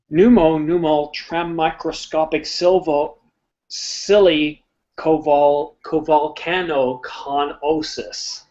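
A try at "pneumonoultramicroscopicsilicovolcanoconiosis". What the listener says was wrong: Ah, so you don't pronounce the first P?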